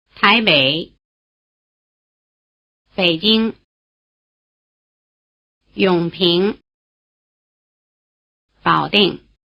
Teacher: In Běijīng it comes before a different full tone and so it loses its rising tail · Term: low tone